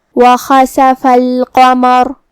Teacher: کلمت وخسف میں خا کی ادائیگی حلق کے اوپر والے حصے سے ہے. خا بھی حروف التفخیم میں سے ہے تو ہم یہ حرف کو بھاری آواز میں پڑھیں گے.